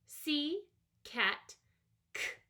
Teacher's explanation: I feel it moving but I don't feel the vibration I do feel some air coming out though